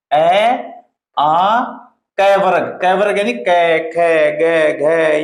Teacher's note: कंठ से बोले जाने वाले वर्ण होते हैं